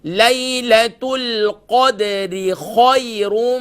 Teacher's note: خو گلے کے ٹاپ سے ادا ہوگی, اور اس کے بعد یا لین ہے, را کو فل ماؤتھ کریں گے, اور یہاں پر ادغام مع الغنہ ہوگا کیونکہ را کے اوپر تنوین کی علامت ہے.